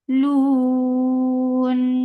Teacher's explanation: So because of this waqf, we are giving sukoon on noon. This temporary sukoon has turned this 2 counts long vowel into 4. This is mad arid sukoon.